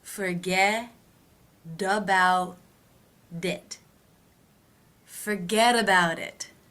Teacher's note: those T's between vowel sounds will be pronounced as D's